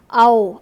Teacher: हवा जो है वह कंठ से आ रही है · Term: कंठोष्ठ्य